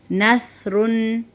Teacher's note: سا کی آواز باریک و نرم ہوتی ہے